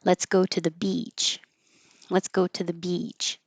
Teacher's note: you can also um stretch it out so that beach is a little longer and that helps people hear that it's the e sound.